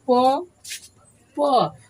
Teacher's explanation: प बोलने के हमारा लिप्स जो होता है आपस में स्पर्श हो रहा है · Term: ओष्ठ